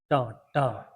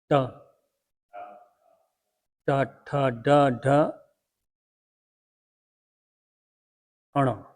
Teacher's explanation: इसमें जीभ थोड़ी मुड़ती और ऊपर वाली हिस्से को छूती है। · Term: मूर्धा